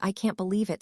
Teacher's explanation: Cannot becomes can't. But spoken quickly it sounds like can with barely any t I can't believe it sounds like I can believe it.